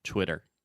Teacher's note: when you say it fast the second T will be a little bit softer